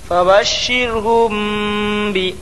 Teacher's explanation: فبشرهم بی، میں اخفاء شفوی ہوگا، میم ساکن کے بعد با آیا، اس لیے غنہ کے ساتھ اخفاء شفوی ہوگا